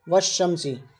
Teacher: الف لام دونوں کو نہیں پڑھنا، واو کو ڈائریکٹ ہمیں شین میں ملانا ہے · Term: حروف شمسی